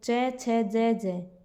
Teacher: पूरा च वर्ग वह तालव्य से बोला जाता है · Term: तालव्य व्यंजन